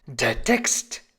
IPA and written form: deːɐ̯ tɛkst (der Text)